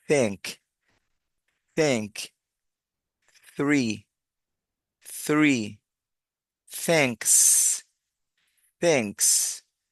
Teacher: la th tiene dos sonidos aquí decimos la lengua dentro de los dientes